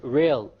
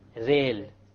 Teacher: The English R comes from the middle of the tongue, whereas the Arabic Ra comes from the tip of the tongue, along with the incisors or the gum behind the incisors.